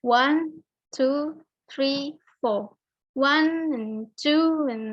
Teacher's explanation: yang kita tekan di sini kata one two three four nya yang harus dibaca keras panjang